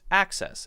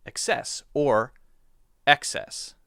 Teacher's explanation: access stresses the first syllable, and excess sometimes stresses the second syllable, da. So there's the vowel difference, the A and the E, and also the stress difference, da and da.